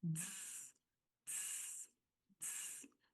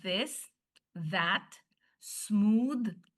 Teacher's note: it's called the voiced sound because your vocal cords vibrate when you make the voiced TH sound.